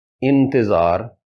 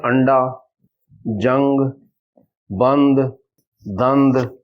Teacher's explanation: اتھے نون نی آواز نہ اخفاء ہونا، بس اس آواز وچ تھوڑا جا لمبا کرساں اخفاء ادا ہوئے گی سی۔